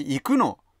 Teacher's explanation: しかし行くの、これは必ず中高で発音されます